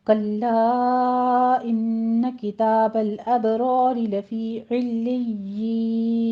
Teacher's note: کلا میں مد منفصل جائز ہے، 4 کاؤنٹ کرنا ہے، ان پہ غنہ کرنا ہے 2 کاؤنٹ کر کے.